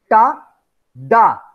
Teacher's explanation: these sounds are articulated same goes with alveolar ta and da AIR block is created by blocking the air using the tip of the tongue touching the alveolar Ridge